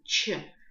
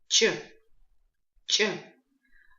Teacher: звук резкий и без придыхания